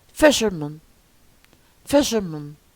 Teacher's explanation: stress the first syllable